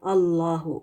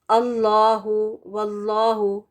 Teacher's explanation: when ever the आया begins with अल्लाहस name लाम एंड लफ जलाला is रेड हैवी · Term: मोटा